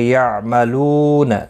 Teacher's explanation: لو واو مدہ ہے، ایک الف کی مقدار کے برابر کھینچ کر پڑھیں گے